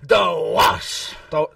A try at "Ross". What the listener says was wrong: It's spelled with an R, you idiot.